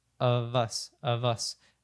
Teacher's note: both of us so we have the the of reduce and it doesn't reduce all the way down to a schw sound but we actually link the V to the US so of · doesn't reduce all the way down to a schw sound but we actually link the V to the US so of us of us and then both of course connects